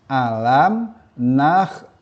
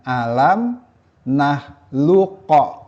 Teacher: Namun sesuai dengan hukum bacaan idgham mutaqoribain, huruf qof yang berjumpa dengan kaf di sini tidak dipantulkan. Sehingga bacaannya alam naklukkum bukan alam nakluqum. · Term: idgham mutaqaribain